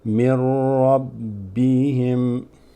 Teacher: There's another shadda, which means we drop this. We go straight from min to ra